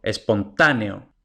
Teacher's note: en sílabas identificamos Cuál es la sílaba tónica yo digo espontáneo entonces la sílaba tónica es ta